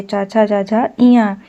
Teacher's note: जो च वर्ग होता है, इनका उच्चारण किससे होता है? तालु से होता है।